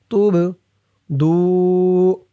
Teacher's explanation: এই বাটা কলকলার হরফ ধাক্কা দিয়ে পড়তে হবে